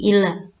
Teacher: Lam tasydid. Dia cukup ditekan tanpa ditahan. Kalau tahan itu lama ya.